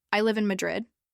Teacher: Let your voice fall on Madrid.